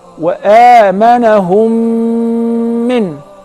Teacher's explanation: That is the letter mim. So if the first mim is non-vowel or sakina, followed by a voweled mim, so I will merge the first in the letter and I will pronounce them as one